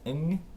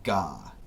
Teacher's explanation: So, for the first change, we're going to change the voiced velar nasal into the aspirated voiced velar stop. So, ng into ga.